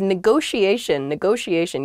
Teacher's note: there are two t's in this but neither t is a hard t they're both very soft that sh sound because they're followed by the i and another vowel that she